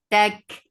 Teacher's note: attached kaf, kaf will get sifa of hams